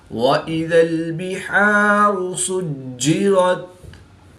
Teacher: جیم بھی حروف قلقلہ میں سے ہے، اور یہ بھی مشدد ہے، تو یہاں پر بھی ہم قلقلہ کبریٰ کر کے پڑھیں گے